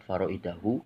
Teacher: Kemudian ada mad wajib mutasil ya, ada hamzah, ada alif itu huruf mad, kemudian bertemu dengan hamzah dalam satu kalimat faraidahu. Ini berarti mad wajib mutasil, panjangnya 2,5 alif atau 5 harokat